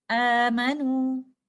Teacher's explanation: यहाँ पर कुछ और एग्जाम्पल्स हम मद्दुल बदल की देखते हैं। अलिफ से पहले हमें हमजा नजर आ रहा है और अलिफ एक मद कंडीशन में है, तो हम यहाँ पर 2 काउंट स्ट्रेच करते हुए इसको इस तरह से पढ़ेंगे